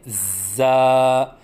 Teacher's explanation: زا کی ادائیگی کے وقت زبان کو دونوں دانتوں کے درمیان لائیں اور سیٹی کی آواز نکالیں، کیونکہ زا میں سیٹی کی صفت ہے، اور پھر منہ کھولیں، کیونکہ الف کی ادائیگی منہ کے کھولنے سے ہوتی ہے، اور ایک الف کے برابر لمبا کر کے پڑھیں، جیسے زا، نہ ایک الف سے کم ہو جیسے زا، اور نہ ایک الف سے زیادہ ہو جیسے زا۔